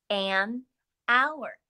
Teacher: i hear an o w sound i don't hear the h the h is a consonant but it is a silent consonant in the word hour